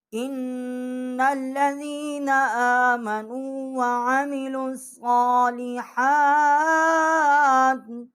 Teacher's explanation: یہاں پر جو واو ہے اور ڈبل یہ حمزہ ہے اور لام جو ہے یہ لکھنے میں تو ہے لیکن پڑھنے میں جو ہے یہ ساکت ہو جائیں گے